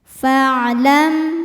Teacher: mim sukun menghadapi huruf hamzah huruf selain mim dan ba maka mim sukun dibunyikan dengan bunyi m bunyi aslinya dan tidak ditahan · Hamzah wasal ini kalau di tengah tidak kita baca jadi Fa tetap pendek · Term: izhar syafawi